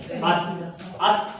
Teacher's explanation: लगती जुबान की नोक ऊपर दांतों की जड़ से लगती है